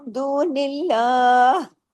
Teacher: लाम को हैवी नहीं किया मैंने और आखिर में गले में हा भी मैंने पढ़ा है